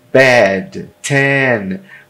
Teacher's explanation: e o e que é o nosso e com acento agudo som aberto com a língua baixa na frente da boca é o som do e no português por exemplo Bad ten